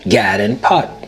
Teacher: The lot trap vowels are reversed for God and pat to sound like gad and pot.